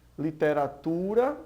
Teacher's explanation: nós vemos aí que o tu é a sílaba mais forte, é uma paroxítona.